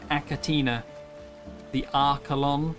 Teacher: the CH sound in some scientific naming tends to be it's a K sound. It's a hard K.